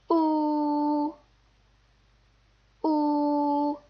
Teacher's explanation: it's pronounced like the double O in to or even like the ooh sound in U but again make sure you're not inflecting keep your voice flat and high pitched